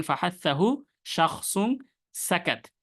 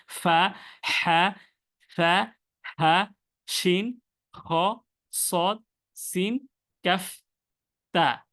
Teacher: এই হরফগুলো নরম থাকার কারণে এই হরফগুলো থেকে বাতাস বের হয় যখন আপনি উচ্চারণ করবেন। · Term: হামসের